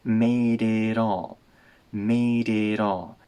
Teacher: the duh and ta here get reduced